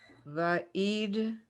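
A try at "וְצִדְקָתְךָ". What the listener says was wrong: A tzadi, I'm sorry. That's a tzadi. TZ sound. TSTZ.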